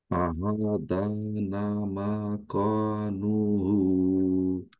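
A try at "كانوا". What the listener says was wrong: হ্যাঁ, এটা ক না, এটা হবে কা।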